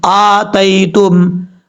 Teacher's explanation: اور اس کے بعد ہے حمزہ کھڑا زبر آ، تا یا زبر تائی، تا میم پیش تم، آتیتم، حمزہ کے اوپر کھڑا زبر ہے، ایک الف کی مقدار اس کو لمبا کر کے پڑھیں گے